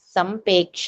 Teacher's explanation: సంప్రేక్ష్య అది రకారం వినిపించట్లే సంపేక్ష అంటున్నావు చూడు సంపేక్ష కాదు సంప్రేక్ష్య 13 థర్డ్ పాదంలో సంప్రేక్ష్య సంప్రేక్ష్య